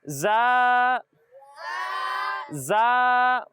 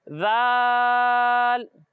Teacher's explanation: ان دونوں میں ایک فرق ہے، اور وہ فرق یہ ہے کہ جب ہم زا کی ادائیگی کریں گے تو اس میں سیٹی کی آواز آئے گی، اور جب ہم ذال کی ادائیگی کریں گے تو اس میں سیٹی کی آواز نہیں آئے گی۔ یعنی اسے پڑھیں گے زا زا، اور اسے پڑھیں گے ذال۔